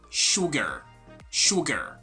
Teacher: try to pronounce it we have an ass in there but the sound is totally different like the sound is shu not su